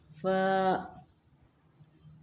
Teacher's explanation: ऊपर के दांत नीचे के होंठ के गीले हिस्से पर लगेंगे